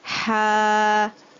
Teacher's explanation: with the alif sukun, you will lengthen the sound of the fatha